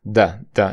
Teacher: esa th se pronuncia como una d pero una d d interdental quiere decir que la punta de la lengua está detrás de tus dientes superiores e inferiores